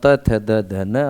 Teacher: अर्थात थ जो है वो दंत है जी